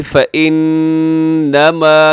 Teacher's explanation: نون مشدد ہے، غنہ کیجیے گا، تھوڑا کھینچ کے پڑے گا کیونکہ اس میم کے ساتھ الف بھی ہے۔